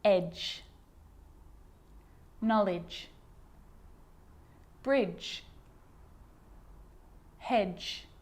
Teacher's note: a D can be very quiet not quite silent but very quiet in front of a G like in these examples edge knowledge bridge hedge so in these